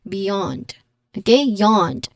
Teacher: It has a stress on the second syllable with a long a sound. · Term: stressed syllable